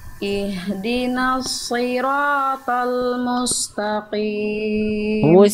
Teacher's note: huruf nun, huruf tipis, huruf ta, huruf tipis, jangan ihdinos, bukan no, tapi na. Lalu mustaqim bukan musta, Ihdina siratal mustaqim.